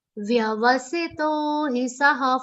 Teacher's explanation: First va is half. Second va is complete. Do not say vavasito.